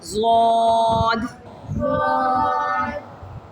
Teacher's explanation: زبان کا جو ہماری سائڈ والا حصہ ہے وہ آپ اوپر والی داڑوں کو لگائیں، 5 داڑوں کو